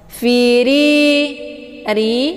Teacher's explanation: Ri hukum bacaannya ditipiskan karena ra ini harokatnya kisrah